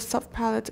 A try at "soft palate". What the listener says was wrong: Soft palate. You're making it a little too short. Ah is not a short vowel, remember. Ah. Soft.